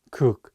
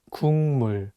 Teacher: The consonant 기역 is for G sound in English, so you can read it as 국. But it's paired with the nasal sound 미음, so it changes the pronunciation from a G sound to an NG sound, and you need to read it as 국물.